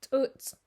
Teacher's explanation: it's just like an english ts but again it pops out a little harder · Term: the hard ts